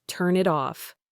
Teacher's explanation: The N links to the it and the T links to the off. Your brain, which is trained to read these words with spaces in between, is trying to hear a pause where there isn't one. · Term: linking consonants to vowels